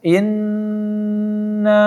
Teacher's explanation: Inna, ya, na-nya lebih panjang dari in-nya. Na dibaca 4 sampai 5 harakat karena dia mad jaiz, maka dipanjangkan 4 sampai 5 harakat.